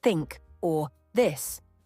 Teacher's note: the th sound in words like think or this is often replaced with t or d resulting in Tink or dis pronunciation errors are particularly common because